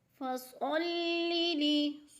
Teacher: لام دونوں باریک ہیں، لام دونوں کے نیچے زیر آ گئی ہے تو لام باریک پڑھے جائیں گے